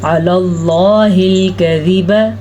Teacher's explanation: اللہ کا نام پر پڑھنا ہے کیونکہ لفظ اللہ سے پہلے زبر ہے۔